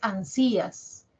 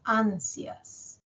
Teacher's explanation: la i es más cortita ya dura menos la i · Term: diptongo